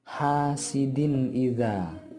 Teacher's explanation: Jadi pada kalimat din, pada huruf din itu suara tanwinnya harus dipendekkan dan langsung dimasukkan ke huruf alif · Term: idhar khalqi